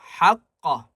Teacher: قاف کو موٹا کریں گے اور قلقلہ کریں گے